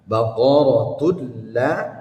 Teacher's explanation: Baqaratul la, sehingga dia tidak berdengung, ya, walaupun dia idgham masuk bunyi bacaan tunnya ke dalam huruf lam, tapi dia tidak berdengung, ya. La panjang 2 harakat. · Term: idgham bila gunnah